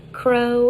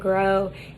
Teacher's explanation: the lowercase k is voiceless and that's a velar stop and then the lowercase g is voiced and that's a velar stop